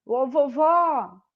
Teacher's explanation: Pode ver que a última sílaba é a mais forte. E como ela termina na letra O, eu coloco o acento da vovó. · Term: oxítona